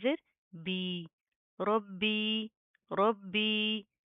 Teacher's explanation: با کے اوپر تشدید ہے، سختی سے مضبوطی سے جما کر پڑھیں گے۔